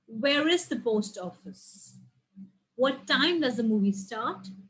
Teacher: it is a falling intonation for example in the end it goes down